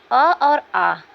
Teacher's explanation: बच्चों अ और आ का उच्चारण स्थान कंठ है